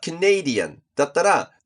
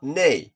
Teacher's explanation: in Canadian, the stress is in this part, and it's pronounced [neɪ]. The vowel is AY.